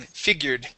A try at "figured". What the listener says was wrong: Here you had said figured with a T sound. Let's try and get a D there.